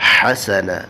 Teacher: ہا کو حلق سے نکالیں گے، وسط حلق سے